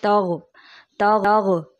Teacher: ونستغفرک یہاں غین کی آواز کو ہلا دیا جاتا ہے، جیسے تغ جو درست نہیں، درست ادائیگی ونستغفرک۔